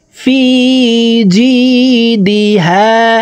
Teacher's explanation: ফি এখানে এক আলিফ টান, জেরের বাম পাশে জজমালাইয়া মদের হরফ, ডান দিকের হরকতকে এক আলিফ টানিয়া পড়িতে হয়।